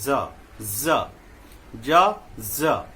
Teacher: उसे दांत के मूल मसूढ़ा से बोलेंगे। इस टेक्निक को समझिए, ज यानी कि दांत में जो मसूढ़ा है हमारा, दांत का जो मूल है ना, यहां ले आएंगे, ज हम सटा देंगे ऊपर की तरफ, ये आ जाएगा।